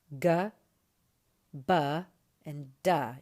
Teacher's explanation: Add to those a little bit more work coming from the voice, and you get the voiced letters, g, b, and da. You can hear how there's more going on in the larynx, more going on in the voice box, supporting the sound that you're making in your mouth and your head.